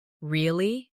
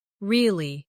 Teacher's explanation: Say, Really? with a rising tone to show surprise. Now say, Really. with a falling tone to show you don't believe someone. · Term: intonation